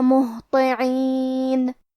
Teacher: کلمت مہطعین یہاں ہا ساکن ہے لہذا ہمیں ہا کو ظاہر کرنا ہے اور ہا کی ادائیگی حلق کے نیچے والی حصے سے ہے